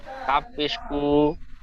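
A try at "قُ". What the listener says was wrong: কাপেশ কু, কাপ পেশ টান হয় না, কাপেশ কু, পেশের হারাকাত টান হয় না, কাপ পেশ কু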